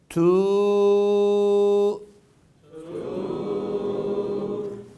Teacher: tu bakınız şu ses değil t tü sesi geliyor değil bak ne ince o ü ne de u değil ortası inceltilmiş u